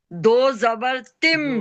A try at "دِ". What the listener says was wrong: دو زبر نہیں، دو زیر.